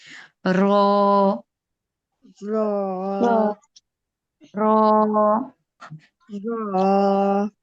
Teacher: পিঠ, জিহ্বার আগা দিয়ে উচ্চারণ করবেন না, জিহ্বার আগার পিঠ হবে, জিহ্বাটা একটু উল্টিয়ে উচ্চারণটা হবে, হ্যাঁ, জিহ্বার আগার পিঠ উপরে তালুর সঙ্গে লাগবে।